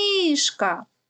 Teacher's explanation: який звук найдовше тягнеться звук и Він стоїть в першому складі значить перший склад наголошений